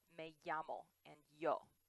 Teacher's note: in each dialect, the double L and Y are pronounced the same. So for example, most places they say it like ya, like me llamo and yo. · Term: double L or the Y sound